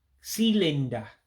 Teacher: dots underneath gives that high-pitched I sound or E sound